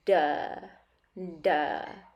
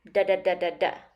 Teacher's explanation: the hard palate right behind your top front teeth step two similar to a d but not exactly it needs to be faster not paused or stopped so it's not duh duh it's da da da da da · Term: flap t